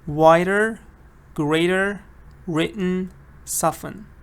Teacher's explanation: if you speak American English you are not gonna hear T in any of these words